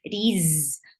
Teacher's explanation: Ra is light here because whenever ra is with kasra, it is light.